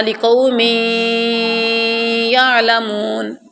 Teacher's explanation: جو آواز ناک میں جا رہی ہے یہ غنہ ہے